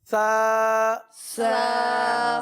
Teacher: जबान का सिरा और ऊपर के दांतों के अंदरूनी किनारे, ये इसका मखरज है